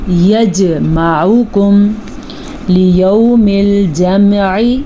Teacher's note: جیم کے اوپر ساکن ہے اور جیم حروف قلقلہ میں سے ہے تو یہاں پہ جھٹکا دیں گے جیم کے اوپر